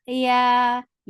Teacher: Ya is soft, make it two counts long.